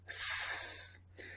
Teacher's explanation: I'd like you to make the sound s like a snake s s and just touch your throat as you make the sound you cannot feel any vibration from your throat · now this vibration is your voice making a sound okay so the S sound is unvoiced because there's no vibration